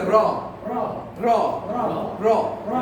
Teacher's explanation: এই তিনটার ক্ষেত্রে যে সমস্যা ভুলটা আমরা করি সেটা হলো যে র যখন উচ্চারণ করব ভয় বিন্দু র, তখন জিহ্বার আগা উপরের দাঁতের গোড়াকে ঠোকর মারবে।